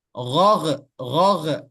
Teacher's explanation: dia tidak langsung melepas daripada makhrajnya sehingga timbul seperti makharijul huruf atau sifat qalqalah